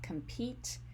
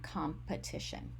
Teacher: e in the second morpheme so we have compete and competition so a long e if you will and a schwa